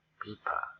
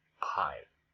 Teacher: aspirated with pressure of the air